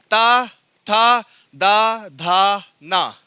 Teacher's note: जो ध्वनि है वो दंत से स्पर्श कर रही है, बिना दंत के आप बोल नहीं पा रहे हैं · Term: दंत ध्वनि